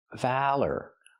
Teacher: Valor, use the short a sound like black cat, val, then the er sound like burger, valor. Put the stress on the first syllable.